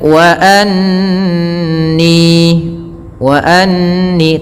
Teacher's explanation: tahan suara nunnya karena di sini ada bacaan gunnah